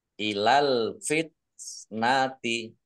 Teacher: Tak sukun, ya keluar S sedikit.